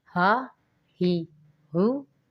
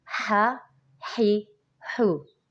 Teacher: یہ جو ہ ہے یہ حلق کے نیچے والے حصے سے ادا ہوگا، اور جو ہا ہے وہ حلق کے درمیان والے حصے سے ادا ہوگا